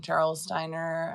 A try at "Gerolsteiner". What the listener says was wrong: Gerol, not Gerald. Gerolsteiner.